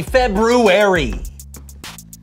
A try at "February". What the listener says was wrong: Did you say February? I know there's an R there, but most people don't pronounce it.